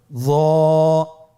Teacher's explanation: জিহ্বার আগা, সামনের উপরের 2 দাঁতের আগার সঙ্গে লাগিয়ে উচ্চারিত।